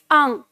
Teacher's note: आपके कंठ से आवाज नाक में जाएगी, मुख में नहीं आनी चाहिए।